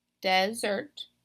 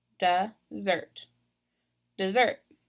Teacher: So I'm stressing that first syllable. So it does follow that pattern where the first syllable is stressed.